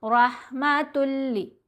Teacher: تا کو لام سے ملاتے ہوئے غنہ نہیں ہوگا، لام اور را پر غنہ نہیں کرتے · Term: یرملون کا ہی ادغام